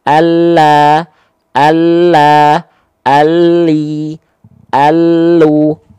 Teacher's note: cukup tepi lidah bagian kiri, tepi lidah depan bagian kiri, tepi lidah depan bagian kanan, menyusur sampai ke ujung lidah, ditempelkan ke langit-langit belakang gigi seri atas. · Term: huruf lam